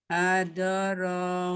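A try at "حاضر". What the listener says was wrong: Pendek Umi. Hadoro. Ulang Umi tadi yang hadoro pendek semua Umi. Syukron, hati-hati di harokat yang pendek ya, di huruf terakhir ya, di huruf terakhir harokat yang pendek harus dibaca betul-betul pendek ya.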